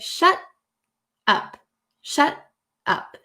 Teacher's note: there's like a breath in between and no T is pronounced.